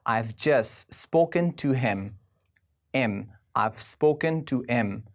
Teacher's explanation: We actually put the last letter in the word just silent, right? We drop it.